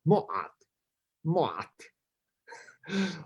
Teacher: But the vowels in that are actually u and ah